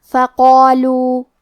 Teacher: کیونکہ اس کے پہلے حرف القاف کا حکم ہے تفخیم، تو ہم قاف کو اور مد الف کو دونوں کو بھاری آواز میں پڑھیں گے